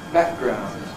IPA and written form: ˈbæʔgraʊnd (background)